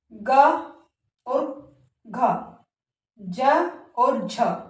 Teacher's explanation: यानी जिन व्यंजनों का हम उच्चारण करते हैं और उनका उच्चारण करते समय हमारे गले में जो एक कंपन जो है पैदा होता है हवा के माध्यम से तो उस कंपन से उत्पन्न जो व्यंजन होते हैं वे हमारे सघोष व्यंजन जो है कहलाते हैं।